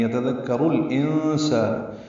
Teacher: انسان میں نون ساکن کے بعد سین آنے کی وجہ سے اخفا ہے